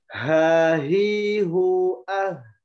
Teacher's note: Nah, H ini bedanya, dia memiliki sifat hamas. Ya, hamas itu mengalir suara tuh, atau nafas. Ya, mengalir suara atau nafas dengan aliran yang halus gitu.